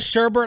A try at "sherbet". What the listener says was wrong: There's no second R.